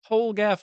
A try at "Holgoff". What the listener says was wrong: Yeah, it's not a gaff. It's a goof.